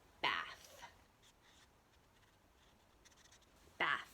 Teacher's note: So I'm going to put a little symbol like this for no buzzing. There's no buzzing in my throat when I say the word bath.